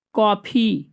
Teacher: कॉफी ना ओ बोला जाता है ना आ बोला जाता है सीधा कापी नहीं बोलते ना कॉफी भी नहीं बोलते कॉफी उन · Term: आगत स्वर